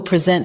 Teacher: as a verb, present is pronounced with the stress on the second syllable